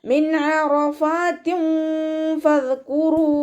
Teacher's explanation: നൂനിൻ്റെ സൗണ്ടിനെ വ്യക്തമായിട്ട് കേൾക്കുക. ഐനിൻ്റെ സൗണ്ടിനെ തൊണ്ടയുടെ മധ്യഭാഗത്ത് തന്നെ കൊണ്ടുവരിക · നൂൻ സാക്കിനയ്ക്ക് ശേഷം ഇവ്ഹാറിൻ്റെ ലെറ്റർ ആയിട്ടുള്ള ഐന് വന്നു. നൂൻ സാക്കിനയെ വ്യക്തമാക്കി മണിക്കാതെ ഓതിക്കൊടുക്കുക